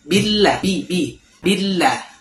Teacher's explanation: pada lafaz Allah, itu lamnya ditahan ya 2 detik. Karena di sini ada tasydidnya. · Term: ditahan lamnya